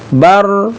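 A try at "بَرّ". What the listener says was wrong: Bukan bar, kalau bar saja batu satu ra-nya, berarti satu ra.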